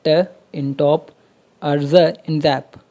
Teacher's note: एल्वियोलर्स, sounds produced when the tongue टिप touches the area behind टॉप teeth